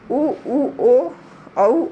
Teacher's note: ऐसे स्वर हैं जिनके उच्चारण में होठों का आकार गोल हो जाता है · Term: वृत्ताकार स्वर